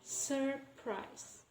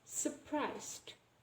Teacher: we can pronounce it just as surprised, and we don't pronounce the R sound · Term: dissimulation